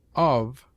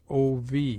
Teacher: It has an unvariable sound, except that of is sometimes spoken nearly as ov.